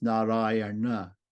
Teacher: it has an r in it right before we get to the end so the N turns into a cerebral n